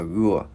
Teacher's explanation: Chữ này chữ ua mà không có chu môi. Chữ g mình gắn vào là gua.